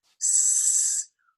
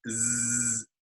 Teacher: So both of these sounds, S and Z, are produced the same except for one difference. That one difference is voicing. So if we put our hand here and we produce an S sound, S, we feel no vibration.